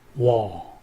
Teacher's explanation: 그래서 입을 상당히 크게 벌린다라는 느낌으로 발음을 해야 됩니다. 그래서 입술을 거의 벌리지 않은 상태로 W 발음을 준비하고 있다가 바로 입을 상당히 크게 벌리면서 소리를 내면 됩니다. 그래서 와 하면 W 하고 O 소리가 나는 거죠.